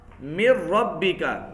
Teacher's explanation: ادغام ضروری ہے لیکن غنہ نہیں ہوگا